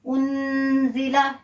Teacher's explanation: حروف اخفا ایسے حروف ہیں جب اگر وہ نون ساکن کے بعد کوئی بھی حرف آ جائے گا تو وہاں ہم اخفا کریں گے. اخفا یعنی نون کی آواز کو ناک میں چھپا کر پڑھیں گے. تو یہاں اخفا کیا جائے گا.